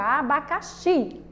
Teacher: Onde é que está a sílaba mais forte? O xi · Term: sílaba tônica